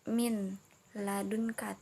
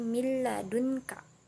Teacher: Min mil beda ya, jadi mil ladunka, jadi tanpa dengung dan langsung dimasukkan